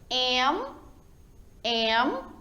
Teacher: M, ó, os lábios, ó, toca um no outro, tanto o inferior quanto o superior.